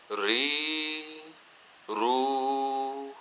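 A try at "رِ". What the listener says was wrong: रा को जब जेर के साथ पढ़ा है तो मोटा तो नहीं किया?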